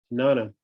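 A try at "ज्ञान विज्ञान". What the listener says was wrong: It's actually Gyan and Vigyan. JN is pronounced Gyan. Vigyan, Gyan and Vigyan.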